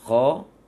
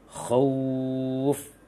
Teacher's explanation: Kemudian khauf, jangan khauf tapi kha tambah u. Khauf, kha yang bulat, yang tebal, kha tambah suara u, menyongkan bibirnya